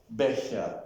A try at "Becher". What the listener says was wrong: Becher. Not he, Becher. Like ich.